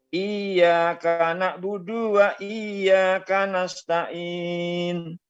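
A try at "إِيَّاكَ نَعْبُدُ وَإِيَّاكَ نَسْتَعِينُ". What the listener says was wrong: Cuba baca jangan cepat sangat.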